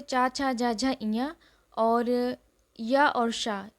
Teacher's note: ये सब तालु से बोले जाते हैं